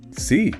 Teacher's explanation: Think about the long e sound, like in C. Your lips stretch wide, almost like you're smiling.